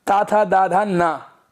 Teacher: इनमें हमें अपनी जीभ को दांतों से लगाना पड़ता है, इसलिए इसको दंत वर्ग भी बोलते हैं